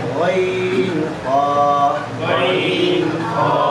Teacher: 3 নম্বর মাখরাজ হলকের শেষ হতে